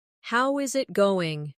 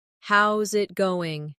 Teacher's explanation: Becomes how's it going? The is disappears and the final G in going often softens. This is called connected speech.